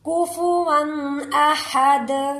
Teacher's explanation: हा को हलक से निकालेंगे। दाल पर कलकला होगा। · वाऊ पर तनवीन है। गुना नहीं होगा क्योंकि नेक्स्ट वर्ड हमजा है। हमजा हरूफ हल्की में शामिल है।